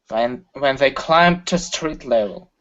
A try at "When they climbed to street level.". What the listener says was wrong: Okay, less pressure. Relax a little bit. Okay, because you're saying ta. Okay, you're really forcing the air out.